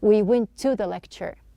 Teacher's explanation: We are not pronouncing two T's.